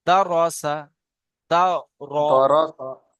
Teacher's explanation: রয়ের উপরে জাবার আছে, তাই রকে পুর করে পড়তে হয়।